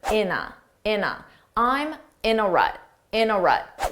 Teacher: And notice how in a sounds like one word.